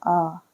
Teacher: حمزہ پڑھا جاتا ہے، یعنی حلق سے نکالنا ہے